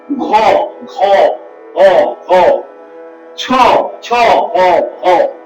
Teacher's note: প্রত্যেকটার মধ্যে হ আছে যেন এরা সম্প্রসারিত বেশি সময় নিচ্ছে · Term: মহাপ্রাণ